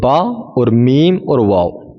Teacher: دونوں ہونٹ مل کر با میم واو غیر مدہ ادا ہوتے ہیں